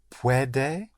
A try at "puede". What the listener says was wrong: only one push.